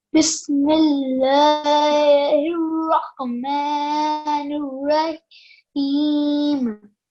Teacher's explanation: this ha is one that comes from the bottom of the throat